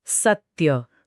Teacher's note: તમારો અવાજ સ પર એક ભાર મૂકે છે. ત્યાં અટકે છે.